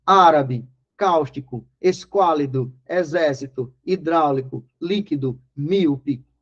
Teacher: todas elas em que a sílaba tônica é a antepenúltima, são acentuadas graficamente. · As palavras proparoxítonas, também chamadas no mundo do crime de esdrúxulas, são aquelas palavras em que todas elas são acentuadas graficamente, isso é o mais legal, ou seja, a antepenúltima sílaba, certo? Todas as palavras cuja tonicidade está na terceira sílaba de trás para frente, na antepenúltima, são acentuadas graficamente.